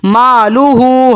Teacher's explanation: ہا کو 1 الف تک لمبا کیا جائے گا کیونکہ الٹی پیش ہے